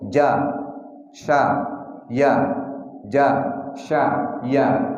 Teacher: yang keluar dari tengah-tengah lidah ada tiga huruf jin, syin ya